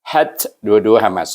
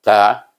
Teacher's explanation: Ha pun hamas, ta pun hamas. Jadi bunyinya hat, berangin.